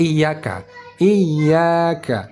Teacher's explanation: 1, ya bertasydid. 2, alif mad dibaca panjang. Yang ketiga, huruf kaf dibaca tipis.